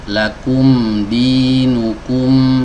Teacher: Contohnya huruf mim di sini. Kalau kita membaca huruf mim sukun, ini ada dua bibir yang bertemu.